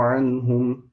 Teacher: نون ساكنة followed by ها, so this is إظهار making it clear with no غنة